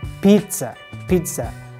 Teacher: just simply stop at the z letter and add T letter in pronunciation